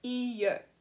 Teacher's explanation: when you hear it, you're going to mostly hear the e. You're going to only a little bit hear the y, and if people are speaking fast in French, you might not even hear it at all, okay?